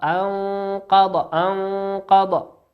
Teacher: كلمة أنقض نون ساكنة أتى بعدها حرف القاف، والقاف من حروف الإخفاء